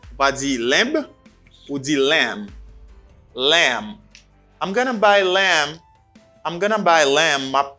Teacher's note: So, sheep, viande sheep là, c'est mutton or lamb. Pas oublier B à pas prononcer dans le mot ça.